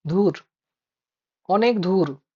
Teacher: ঝাড়খণ্ডী উপভাষাতে আছে মহাপ্রাণী ভবন, অল্প প্রাণকে মহাপ্রাণ করে উচ্চারণ করে